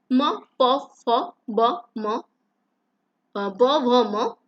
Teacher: ओष्ठों से म प फ ब म ब भ म का उच्चारण हो जाता है